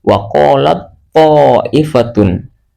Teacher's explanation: Ta sukunnya dihilangkan langsung diidghamkan ke huruf to yang berharokat fathah.